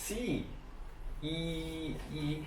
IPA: i: